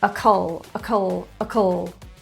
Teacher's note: the end and write it down i-c-a-l is a suffix pronounced both of those vowels are actually reduced to a schwa and they're fast